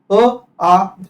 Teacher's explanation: same असणार म्हणजे उच्चार स्थान एकच असणार अ आ तुम्ही बघा कंठातून आपल उच्चार होतो अ आणि आ उच्चार स्थान सेम सजातीय स्वर